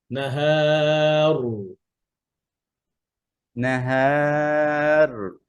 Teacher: হ্যাঁ যেন দুইবার কম্পনটা দুইবার হবে